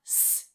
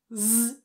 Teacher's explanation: the first one s is voiceless z is voiced we add vibration here if you find z trickier which many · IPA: /s/